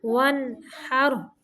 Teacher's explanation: فصلی لربک وانحر، ون پہ غنہ نہیں کرنا، صرف ظاہر کرنا ہے